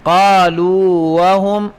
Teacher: واو کا واو میں مثلین ادغام بنتا ہے لیکن نہیں کرنا، چونکہ مدغم جب مدہ ہو تو ادغام صغیر جائز نہیں۔